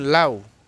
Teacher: লাউ শব্দটিতে লা এটাকে টেনে পড়া যায়। এটা হচ্ছে পূর্ণ স্বরধ্বনি। উটাকে টেনে পড়া যায় না। লাউ ইচ্ছা করলেও টেনে পড়া যায় না। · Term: দ্বিস্বরধ্বনি